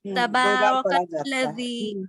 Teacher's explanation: کاف سے لام کو ملا کر پڑھیں گے. یہ حرف شمسی ہے، لام حرف شمسی میں سے ہے، اور لام پر تشدید ہے تو اس کو سختی سے پڑھیں گے.